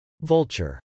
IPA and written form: vˈʌltʃɚ (vulture)